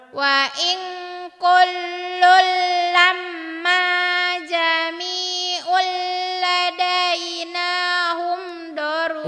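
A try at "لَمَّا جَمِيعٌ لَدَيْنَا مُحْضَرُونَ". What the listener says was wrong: Enggak ada humnya. Hum dapat dari mana?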